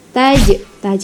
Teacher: itu qalqalah sugro. Memantul ya bunyinya.